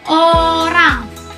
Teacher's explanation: Yang kelima, O. Lidah di belakang mulut, bibir sedikit membulat, contohnya orang.